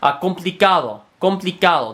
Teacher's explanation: Spanish, the D in Spanish is actually interdental